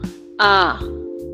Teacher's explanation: حروف جوف دہن الف اور حمزہ منہ کے خالی حصے سے ادا ہوتے ہیں